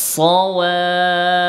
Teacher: সিন তো পাতলা, এটা হইল সিনের, আর সদেরটা মোটা হবে